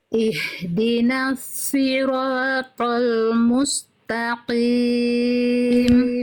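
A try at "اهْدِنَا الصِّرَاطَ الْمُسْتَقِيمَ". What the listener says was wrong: Musta. Jangan terhenti. Jangan terhenti. S-nya jangan terhenti.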